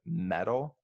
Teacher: you kind of tap the T I listening no no one says I listen to metal music